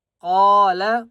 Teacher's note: قاف کو ایک الف کی مقدار کھینچ کر پڑھیں گے اور قاف کو موٹا کریں گے